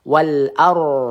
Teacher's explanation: Ar ro sukun bertemu dengan harakatnya sebelum berharakat fathah kita baca tebal ya.